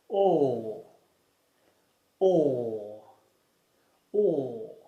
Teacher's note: To produce the sound, put your tongue low and at the back of your mouth. Then slightly push your lips together whilst making a long voiced sound. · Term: open mid-back rounded vowel